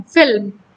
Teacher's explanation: L और M के बीच में कोई भी वॉवल नहीं है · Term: कॉन्सोनेंट क्लस्टर